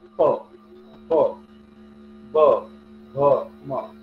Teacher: होठांचा उपयोग केला आणि आतून येणारा जो ध्वनी आहे किंवा आवाज जो आहे त्याला आपण ब्रेक केला होठाने. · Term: होठव्य